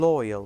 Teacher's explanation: which is composed of the diphthong /ᴐɪ/ + the vowel sound /ə/, as in loyal /lɔɪəl/.